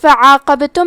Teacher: حرف العین کی ادائیگی حلق کے درمیان والی حصے سے ہے